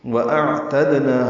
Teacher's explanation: وَأَعْتَدْنَا حمزہ حلق سے، عین وسط حلق سے ادا کریں گے، دال ساکن پہ قلقلہ ہے